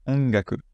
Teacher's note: avec le ga qui va passer par le nez